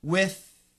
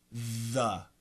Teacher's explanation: keep it either aspirated with or vibrated the